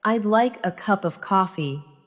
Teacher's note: The stress falls on like, cup, and coffee.